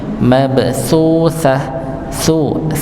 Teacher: ujung lidah bertemu dengan ujung gigi seri atas